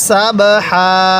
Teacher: এই হাটা উচ্চারণের সময় মুখ দিয়ে হালকা বাতাস বের করব সাবহা এই বাটা কলকলা হরফ বাটা উচ্চারণের সময় একটু ধাক্কা দিয়ে পড়বো